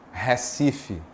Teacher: Se você está mais afastado do Recife, você tende a dizer Recife, mais aberto. As vogais são mais abertas.